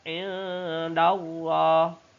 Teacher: Karena di situ adalah indallah. Ada nun sukun bertemu dengan dal atau nun sukun bertemu dengan huruf ikhfa. Hukum bacanya samar-samar dan mendengung.